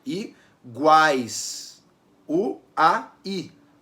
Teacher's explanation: U, A, I. O A é a vogal mais forte, o U é uma semivogal, o I também é uma semivogal. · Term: tritongo